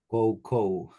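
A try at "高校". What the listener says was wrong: Koko, ya, jangan U-nya jangan terdengar.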